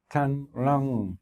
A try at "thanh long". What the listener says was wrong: No, you didn't close your lips. Close your lips at the end. Thanh long. So the simple act of closing your lips creates the right sound.